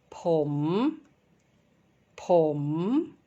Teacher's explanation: And the correct tone is number 5. It is rising tone.